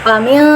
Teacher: Nah, wa min, nah nun mati ketemu shin lagi, ikhfa ausat lagi. Samar-samarnya tingkatnya pertengahan, ikhfa ausat.